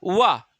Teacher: वाह जो बोलोगे दंतोष्ठ हो जाएगा · ओंठ मिलते ही नहीं आपस में